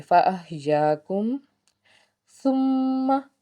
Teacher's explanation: میم کے اوپر تشدید کا قاعدہ، اس کا مطلب ہے یہاں پہ خوب غنہ کرنا ہے